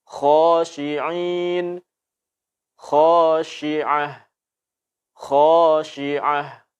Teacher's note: diam saja normal seperti biasa yang ditebalkan hanya suaranya Ho kena pangkal lidah terangkat ke langit-langit dan suara pun ikut tebal khosyi'in khosiah khosiah tidak boleh khosiah kita monyong kan ini kesalahan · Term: huruf kha